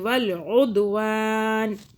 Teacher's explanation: دال پہ قلقلہ کیا، جھٹکا دیا